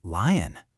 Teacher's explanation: Feel how you make that smooth l sound. The tip of your tongue does all the work. Next up, M.